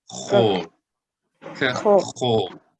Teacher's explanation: even in modern Hebrew, they pronounce it as O instead of A